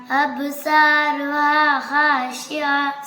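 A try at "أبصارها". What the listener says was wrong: സ്വാദാണ്. അബ്സ്വാറുഹാ.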